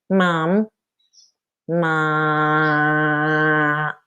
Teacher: in the vowel, I've now put all the airflow in my nose, the same as I did with the M. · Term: hypernasal